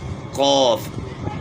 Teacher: زبان کی جڑ کا وہ ایسا جو گلے کے ساتھ لگتا ہے، اس کو اوپر تالو کے ساتھ لگائیں گے تو موٹا کاف ادا ہوگا، قوف۔ یعنی دونوں کو کاف نہیں پڑھنا ہے۔